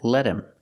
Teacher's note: him is not an important word it's not stressed so the H is silent in him